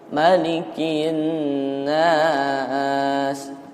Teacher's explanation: Kalau nanti iramanya misalkan nada turunnya itu masih ada satu ayat lagi, ya, maka yang satu ayat lagi itu tetap diturunkan. Pokoknya nada akhir itu harus turun, seperti itu. · Ya, jadi bisa naik turunnya itu kalau misalkan yang formasinya 3 itu nada pertama naik, nada kedua sedang, nada ketiga turun. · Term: rumus nada